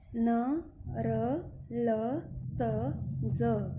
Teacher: दांतों के ऊपर के जो तालु का भाग है जीभ उसे छूती है, तब इनका उच्चारण होता है। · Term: वर्तस्य